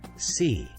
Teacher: Place your hand on your throat and say, see, and you will feel no vibration for the S sound